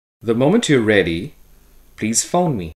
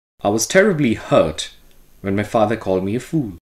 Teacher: the first of the two tone groups in each sentence is said with a rising tone